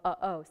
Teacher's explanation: it actually ends up being a glottal stop which is a sound in the middle of uh oh